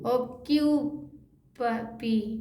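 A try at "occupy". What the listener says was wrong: पी नहीं, पाई,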